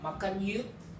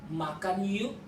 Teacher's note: So, ke sound is not clear to hear because usually even though you see your ke letter, but the ke sound is omitted. Makan yuk, not makan yuk.